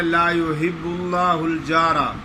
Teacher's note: آگے لفظ اللہ کے لام کو موٹا نہیں پڑھتے